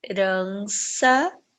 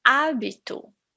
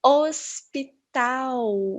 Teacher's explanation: Quando ela está no início das palavras, ela não apresenta nenhum som. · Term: H mudo